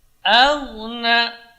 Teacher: Nah, di sini qalqalahnya langsung karena tidak ada tasydid di atasnya. Aghna, jadi a tidak boleh baca tebal, jangan aghna, tapi a tetap dibaca tipis. Namanya harf mujawarah, huruf yang berdekatan.